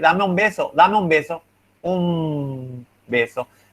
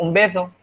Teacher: The B forces the N to change into an M. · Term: regressive assimilation